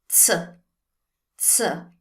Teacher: The Z sound in Italian is a TS sound, like the one you find in bats.